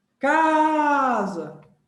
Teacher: então a penúltima na palavra casa foi forte